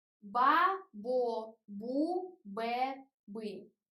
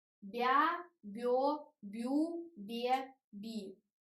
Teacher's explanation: when consonants stand near the soft vowel, it became more soft